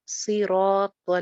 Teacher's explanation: اہدنا الصراط، نصیراط، را الف مدہ ہے ایک الف لمبا